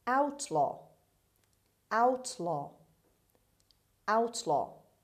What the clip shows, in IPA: ˈaʊtlɒː